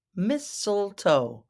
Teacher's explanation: I know it looks like mistletoe, but it's mistletoe. That first T is silent.